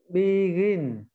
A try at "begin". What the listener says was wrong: Đúng rồi, nhanh đi một chút. Âm y ngắn mà, nó là y ngắn.